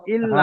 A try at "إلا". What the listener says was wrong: টান আছে কোথায় হ্যাঁ টানটা খেয়াল রাখবেন বানান করার সময় টানটা খেয়াল রাখবেন আপনারা এটা ভুলে যাচ্ছেন যখন বানান করছেন আলিফ মাদ্দার পরে টান দিচ্ছেন না তাহলে ওয়ামা উমিরু ইল্লা